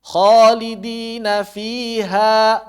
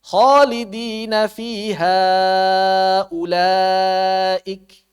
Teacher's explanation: Jadi karena tidak bertemu dengan suara hamzah maka madnya kembali ke asalnya mad thabi'i.